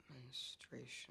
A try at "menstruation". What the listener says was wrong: No. You're saying it like you're scared. Don't say it like you're scared. Say it like it's normal. Menstruation.